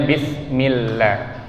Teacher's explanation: Lafaz Allah kita baca tipis karena sebelumnya huruf yang berharokat kasroh atau i.